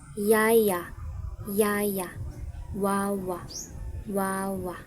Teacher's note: Ang panghuli naman ay ang glide. Mabilis na lumilipat ng posisyon yung dila natin na parang patinig.